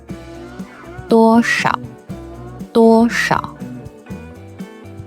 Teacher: Sometimes you will even hear a little bit of roughness in the voice. · Notice how the pitch starts high and then falls directly to a low pitch. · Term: third tone